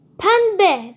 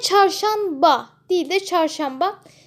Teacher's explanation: yanadır artık çember şeklinde M harfini dönüşmüştür pembe dediğimiz zaman artık buradaki n&b yanyana gelmesinden dolayı bir N harfi m harfini dönüşmüş oluyor